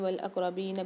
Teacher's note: اقربین میں قاف میں قلقلہ کر کے پڑھیں گے